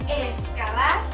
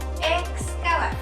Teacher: Si la dividimos en sílabas, nos damos cuenta de que la X aparece al final de la primera sílaba, por lo que tendría que pronunciarse o bien como una KS, o si el hablante lo elige y lo pronuncia de una manera más relajada, puede articularlo como una S